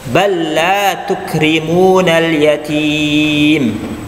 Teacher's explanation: Ada huruf lam, kemudian setelahnya ada huruf lam juga. Maka ya lam di situ double, maka harus ditasdid, harus ditekan.